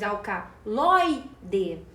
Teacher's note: uma paroxítona porque a penúltima sílaba é tônica nós falamos alcaloide perceba que o lói é a sílaba tônica